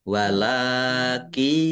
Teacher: Lam fathakah berdiri mad thobi'i panjang dua harakat. Nun sukun bertemu dengan huruf ya. Bacaan idgham bighunah. Masuk dengan mendengung